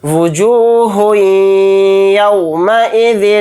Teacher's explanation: ہا کو یا میں ملاتے ہوئے یا پر تھوڑی دیر آواز کو روک کر ادغام اس طرح سے کریں گے